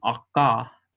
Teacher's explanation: Some people will pronounce this as a uvular stop, so they will say akka.